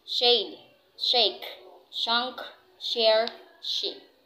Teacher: So now let's go to the alveopalatal fricatives. So let's go to the voiceless alveopalatal fricative